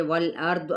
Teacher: را بھی پر ہوگا کیونکہ را ساکن ما قبل فتحہ ہے ، تو وقف بالاسکان یہاں پہ ہوگا، انا غنہ کرتے ہوئے